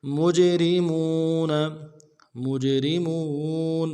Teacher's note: جیم جب ساکن ہوگا تو قلقلہ ہوگا، قلقلہ کریں گے